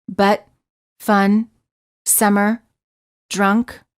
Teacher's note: the lips are completely relaxed and just slightly parted the tongue is also very relaxed and in the middle position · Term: uh as in fun